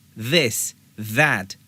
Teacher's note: आपने दिस नहीं बोलना बल्कि this दांतों के किनारों से this, that अदा करना है। ये भी ध्यान में रखिए कि जबान को बहुत ज्यादा बाहर नहीं निकालना, ऐसे नहीं करना, बल्कि थोड़ा सा बाहर निकालना है, ऐसे। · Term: TH वॉइस्ड साउंड